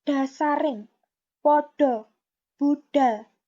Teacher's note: Sementara untuk aksara D, yang penulisannya adalah dengan DH, contoh kosakatanya adalah dasaring, podo, budal, dan sebagainya. Untuk melafalkan kosakata ini, maka ujung lidah berada di tengah langit-langit mulut.